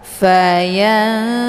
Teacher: Jadi cara bacanya nunnya disamarkan kemudian siap-siap menuju ke huruf ta. Fayanta. Hukum bacaan ikhfa aqrab dibacanya sambil didengungkan.